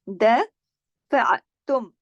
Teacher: दफ़अतुम, दफ़अतुम, फ़ा ऐन ज़बर फ़अ, दफ़अ, ऐन को जमाओं के साथ पढ़ना है, दफ़अ, और आपके गले में ऐन की आवाज़ आनी चाहिए, इस ऐन को अलिफ की तरह नहीं पढ़ना।